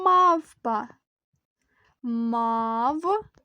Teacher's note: двоскладове слово яке складається із п'яти звуків і наголос падає на перший склад